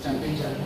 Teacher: It ends with the schwa sound.